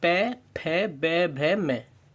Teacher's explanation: जब भी हम ओष्ठव्य बोलेंगे तो हमारे होठ आपस में टच करेंगे